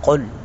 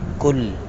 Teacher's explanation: قاف کو پر کر کے پڑھیں گے، کل، اس کاف کو باریک پڑھیں گے